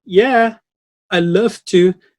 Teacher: it has a very high pitch rising tone and it sounds a little bit like sarcasm